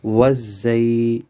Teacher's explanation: زا کو موٹا پڑھیں گے، سختی کے ساتھ پڑھیں گے